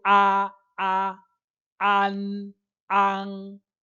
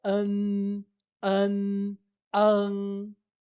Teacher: Então, é essa a diferença, né? Quando você vai fazer com A, você faz um A bem aberto, an, an. E quando você for usar o E, você usa o nosso A anasalado, fica an, an, an.